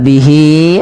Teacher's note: pada lafal bihi ada mad silah qasirah, yang dimana hi-nya dipanjang 2 harokat, ditandai dengan adanya huruf ya kecil berbentuk seperti ini pada lafal setelahnya.